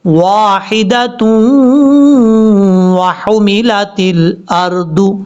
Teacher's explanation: تا کو جب واو سے کنیکٹ کریں گے تو یہاں پر ادغام یرملون کا غنہ ہوگا